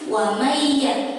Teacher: tapi wa may ya, melebur masuk ke huruf ya-nya